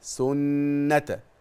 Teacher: ركز بقى على حرف الغنه المشدد حتى لو في وسط الكلمه او في اخر الكلمه سنه يغن بمقدار حركتين